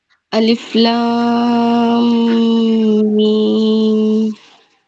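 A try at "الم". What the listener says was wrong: और थोड़ा सा गुन्ना करिएगा, नाक से पढ़ने की कोशिश करिएगा गुन्ना को.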